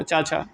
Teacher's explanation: छा तालब्य के अंतर्गत आएगा